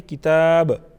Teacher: बा चूँकि ये हरूफ क़लक़ला में से हमने हरूफ क़लक़ला पढ़ी हुई हैं तो इसमें से जो हैं बा भी हैं तो बा पर हम क़लक़ला करेंगे, आवाज़ में जुम्बिश पैदा करेंगे। किताबा अगर वक्फ़ की सूरत में पढ़ते हैं तो फिर इसकी लास्ट वाली जो हरकत है उसको हम साकिन बनाएंगे, किताब।